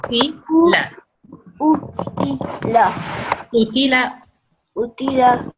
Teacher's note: This is qaf, which comes from the throat. It's one of the serious letters, remember? So you have to say u.